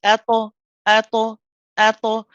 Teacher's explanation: the qalqala is a very smooth flow. We don't put extra energy into it. We don't push off the makhraj.